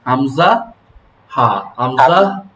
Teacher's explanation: 1 নং মাখরাজ কণ্ঠনালীর শুরু হইতে